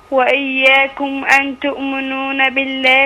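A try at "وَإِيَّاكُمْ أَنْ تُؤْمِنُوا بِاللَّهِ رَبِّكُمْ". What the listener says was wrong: أن تؤمنوا مفيش نون،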